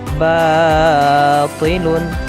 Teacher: Contohnya seperti batilun, terbaca atau dibaca botilun. Di sana agak terbunyi seperti seakan-akan huruf bo, tetapi yang benar adalah ba.